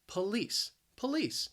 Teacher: The stress is on that second syllable. That first syllable, you hear that schwa, that p. But that second syllable, that spelling, that L-I-C-E, is pronounced lice.